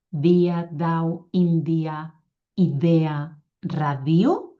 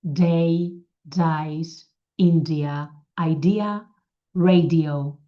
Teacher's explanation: La D del català és dental i la D de l'anglès és alveolar. La D de l'anglès està més enrere, la D del català està més endavant.